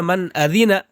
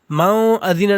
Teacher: نون کی آواز کو ہم ظاہر کر کے پڑھیں گے بلا غنہ کے، اور جلدی پڑھیں گے